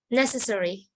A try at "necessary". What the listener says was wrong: Okay, you had the wrong intonation on that word, the wrong stress.